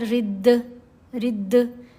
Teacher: جب ہم پڑھیں گے را زیر دال رد، رد یعنی دال کی آواز پلٹ کر واپس آئے گی تو یہ قلقلہ کی آواز ہے. مطلب 2 حروف جب آپس میں یوں ٹکرا کر تصادم کے بعد جدا ہوتے ہیں اس وقت جو آواز پیدا ہوگی وہ قلقلہ کی آواز ہے.